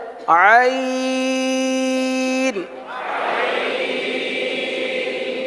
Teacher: عین اور حا یہ حلق کے درمیانے حصے سے ادا ہوتا ہے